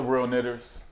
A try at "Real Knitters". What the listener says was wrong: Not real... You're going to have to put the subtitles at the bottom, because you sound like you dropped the ER on that one, my brother.